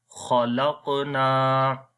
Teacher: خا زبر خا، لام قاف زبر لق، خلق، نون الف زبر نا، خلقنا، خلقنا۔ قلقلہ کریں گے، کمزور قلقلہ ہوگا، اور قاف اور خا کو موٹا پڑھیں گے، آخر میں لمبا کریں گے الف مدہ کی وجہ سے۔